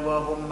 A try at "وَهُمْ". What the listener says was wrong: معش قل وهم. وهم كله مرقق. وهم.